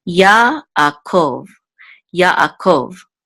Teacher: So the accent is on the last syllable